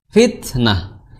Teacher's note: Makhraj huruf ta itu di ujung lidah bertemu dengan pangkal gigi seri atas, yaitu sama makhrajnya dengan huruf dal.